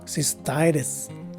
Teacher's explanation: The phonetic spelling would tell us that the primary stress is in the second syllable of the word. The letter C takes an S sound, the letter Y a regular I sound, and both the two letter S's are regular sounding letter S's.